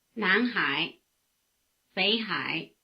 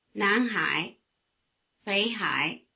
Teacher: Notice that the tone diagrams are the same for both names. Before the low tone of Hai, the low tone of Bei becomes a rising tone, indistinguishable from the rising tone of Nan.